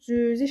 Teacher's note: Bir dənə istisna sözümüz var ki, cüzi sözüdür ki, cüzi kimi yazılır və ü burada uzun tələffüz olunur, cüzi şəklində tələffüz olunur. Yəni ü burada uzun tələffüz olunur